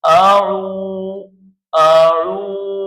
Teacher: تو یہاں حروف مدہ میں سے یہاں واو آیا ہوا ہے، حروف مدہ میں سے یہاں واو آیا ہوا ہے، ہم نے لکھ دیا کہ واو مدہ، یہ واو مدہ ہے۔ واو ساکن سے پہلے پیش ہے واو مدہ، تو یہاں ہم اس کو ایک الف کی مقدار کھینچ کر پڑھیں گے